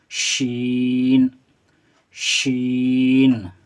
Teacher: शीन पढ़ेंगे, खींचकर पढ़ेंगे और सीटी की आवाज़ इससे अदा होती है।